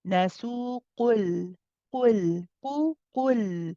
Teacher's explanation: نسوق, we have nasu, the waw again is mad tabi'i, two counts in the case of continuation. And then the qaf is heavy but joint with a light lam. So be careful not to say qul, qul.